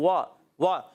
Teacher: वाव होठों की गोलाई से अदा होता है